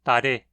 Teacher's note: Outro caso interessante de grande variação alofônica desse fonema a gente pode encontrar no persa. O R do persa, quando em posição intervocálica, é pronunciado como um tap alveolar